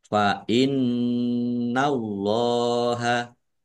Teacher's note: ada tasdidnya ofdumah wau sukun Mad thi'i panjang dua harakat fainnallaha Nun tasdid dibaca ghunah atau mendengung ditahan kira-kira dua harakat biar tampak dengungannya Allahnya dibaca tebal karena harakat di depannya fathah lam fathah berdiri